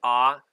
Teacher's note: open backed unrounded vowel